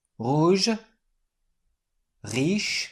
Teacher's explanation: Well, this is a typical French gorgling sound produced in the back of the throat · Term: French gargling sound